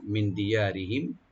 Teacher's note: তো মিন মানে ফ্রম, এখানে নুন সাকিন এখানে আমরা একপা করব, মিন দিয়ারিহিম, দি বলবো আর ইয়াটাকে ওপেন করে একালে টানবেন, আর রা এখানে পাতলা হবে, yani আমরা খুব পাতলা করে দিয়ে করব